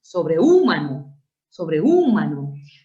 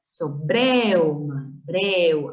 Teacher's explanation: Ahí se forma un diptongo. Una abierta E más una cerrada U con acento en la abierta, eso es diptongo.